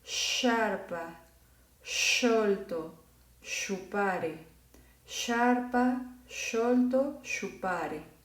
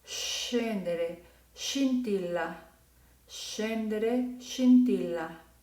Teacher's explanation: Sin embargo, cuando nosotros vemos que está una S antes de este fonema, la letra S va a servir para suavizar ese sonido de ch, ¿ok? Y entonces se va a convertir en el sonido de sh, como el sonido del silencio.